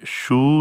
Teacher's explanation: vowels की जहाँ हम बात कर रहे हैं, देखें ये जो ऊ और ओ साउंड्स हैं, ये आपने देखा होगा कि इसमें हमारे अगर आप इनको बार बार प्रोनाउंस करेंगे यानी ऊ और ओ साउंड को, तो आपके लिप्स राउंड होंगे और ये जो आवाज़ है गले के पिछले हिस्से से प्रोड्यूस होगी